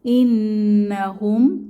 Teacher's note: নুনের উপরে তাসদিদ ওয়াজিব গুন্নাহ